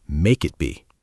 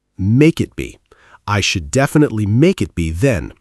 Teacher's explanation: The consonant K links right into the vowel I, make it.